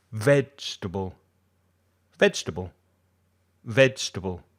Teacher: it appears to be four syllables but it's actually only three